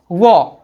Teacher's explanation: जिस वर्ण का उच्चारण दांत और होठ से होता है उसको दंतोर वर्ण है